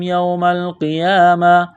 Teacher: یوم القیامتی وقف کریں گے تو گول تا کو ہا سے تبدیل کریں گے